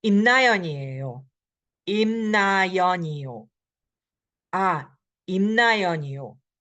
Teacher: Yo goes up. When it's a statement, the yo goes down.